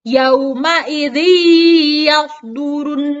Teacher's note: dimasukkan melebur ke dalam huruf ya disertai dengan ditahan sebanyak dua harokat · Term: idgham billaghunnah